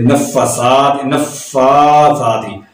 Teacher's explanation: فا کو اور ثا کو دونوں کو ایک جیسا لمبا کرنا ہے، ایک الف کے برابر، کیونکہ دونوں بار کھڑا زبر موجود ہے۔